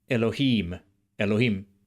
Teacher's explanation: you can hear the longer vowel in im in Biblical Hebrew, Elohim, Elohim, or Eloim.